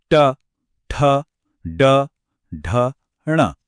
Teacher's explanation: मूर्धन्य ध्वनियां बनाने के लिए जीभ की नोक को थोड़ा पीछे की तरफ मोड़ना पड़ता है और फिर तालू के सबसे ऊंचे हिस्से को छूना पड़ता है।